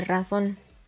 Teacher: dos sílabas la sílaba tónica recae en la última sílaba